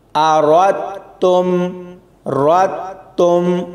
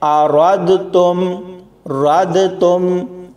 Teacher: حمزہ زبر آ، را تا زبر را، تا میم پیش تم، آرات تم، رات تم، یعنی را اور اس کے بعد تا. دال کا بیچ میں بالکل بھی ذکر نہیں کرنا، اس کی آواز نہیں آنی چاہیے.